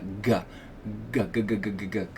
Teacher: the fat part of your tongue pressing up against the soft pallet to pronounce that g g sound